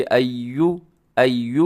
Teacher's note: होंठ आपके गोल हो जाए पेश पर